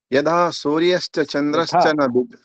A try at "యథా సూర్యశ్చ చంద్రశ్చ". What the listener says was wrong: యథా, థా ఉంది అక్కడ.